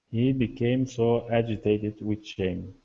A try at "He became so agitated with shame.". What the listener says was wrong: Good. All right, nice job.